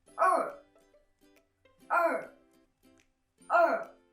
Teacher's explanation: it's pronounced as er er er in fourth tone